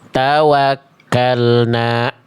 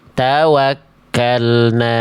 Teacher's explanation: ketika berhenti di kalimat tawakalna itu kayak nambah hamzah hamzah sukun